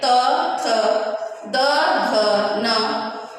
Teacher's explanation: त वर्ग दंत से, दंत को स्पर्श करते हुए निकलते करने वाले वर्ण हैं, त, थ, द, ध, न।